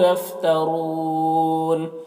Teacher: یفترون میں را کو پر پڑھیں گے اور وقف کی صورت میں مد عارض وقفی ہوگا، تو اس طرح سے پڑھیں گے۔